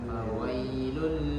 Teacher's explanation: Fawailul, namun tetap dibaca panjang ketika pengucapannya ya. Fawai, nah itu dipanjangkan 2 harokat. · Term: bacaan lin